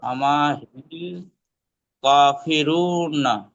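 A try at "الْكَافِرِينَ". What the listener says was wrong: কাফিরিন। র পেশ নেই, রজের আছে, কাফিরিন।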